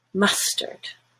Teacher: Mustard. All relaxed in the middle of your mouth.